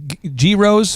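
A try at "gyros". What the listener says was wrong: Okay g is silent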